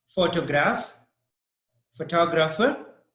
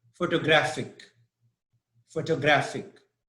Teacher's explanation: the stress is on the first syllable in photograph the second in photographer and the third in photographic